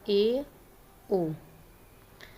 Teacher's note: Next है अर्धसंवृत स्वर। अर्धसंवृत स्वर के उच्चारण में मुख द्वार कम संकरा होता है। ये संख्या में 2 होते हैं, ए ओ।